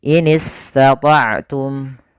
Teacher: sin alirkan nafas kita karena dia bacaan rikhwah atau rokhawah, dan juga ada sifat sofirnya